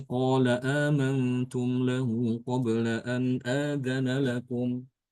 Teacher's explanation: Di sini Imam Hafs membaca lafaz ini dengan menghilangkan hamzah yang pertama.